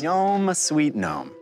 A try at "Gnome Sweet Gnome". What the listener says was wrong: The G in gnome is silent.